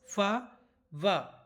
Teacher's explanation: दंतोष्ठ से उच्चारित होने वाले फा वा, जिसमें हमारे दांतों से क्रिया हो, जो हमारे होंठ हैं वो दांत पर टच हो रहे हैं ना, बोल के देख लीजिए आप, फा वा, ठीक है ना।